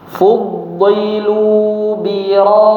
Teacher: Fudilu biroddi ya bir dipanjangkan enam harakat kemudian baru ditasdidkan